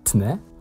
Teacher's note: the soft consonant, in this case ć, depalatalises to the hard t